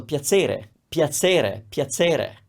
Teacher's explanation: In other parts near Bologna, it might sound like a ts sound, so piacere, piacere, piacere.